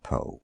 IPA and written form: poʊ (Poe)